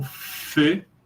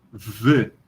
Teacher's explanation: Uma é surda, outra é sonora